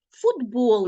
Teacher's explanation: Т глухий А у вимові ми його вимовляємо як д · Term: уподібнення